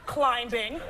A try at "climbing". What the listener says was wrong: She said climbing with the B. The B is silent, guys.